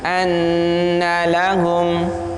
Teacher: di situ ada nun yang ditasydid, maka bunyinya harus gunnah. Anna lahum, gunnah itu panjangnya 2 harokat, 1 alif.